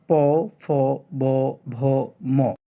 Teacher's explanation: উচ্চারণ স্থান অনুযায়ী ব্যঞ্জন ধ্বনিগুলোকে ভাগ করা যায় জীবামূলীয় তালব্য দন্তমূলীয় দ্বিউষ্ট দন্ত এবং কন্ঠনালীয় ধ্বনি হিসেবে দ্বিউষঠ দুই ঠোট থেকে যে ধ্বনিগুলো উচ্চারণ হয় সেগুলোকে দ্বিউষঠ ধ্বনি বলা হয় · দুই ঠোঁট থেকে যে ধ্বনিগুলো উচ্চারণ হয় সেগুলোকে দ্বিউষ্ট ধ্বনি বলা হয়